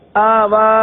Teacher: پہلے حمزہ کو نہیں کھینچا, پہلا حمزہ وہ نہیں کھینچا گیا اور واو کو کھینچ دیا, حالانکہ دونوں کھڑا زبر ہے, دونوں کو ایک الف تک کھینچ کر پڑھیں گے. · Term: غلطی